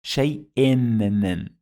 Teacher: Two kasras, shay-in. It added the sound of nun.